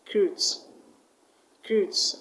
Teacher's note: the stress will go to the second syllable